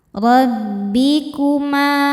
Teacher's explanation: Ro dibaca secara tafkhim karena berharakat di atas yaitu harakat fathah. Cara bacanya ditebalkan.